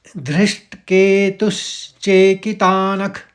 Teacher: मैंने ख बहुत ही हल्के कहा क्योंकि ये हलंत है। हलंत के सारे शब्द जो हैं हल्के से बोले जाते हैं, यानी हिंदी की तरह।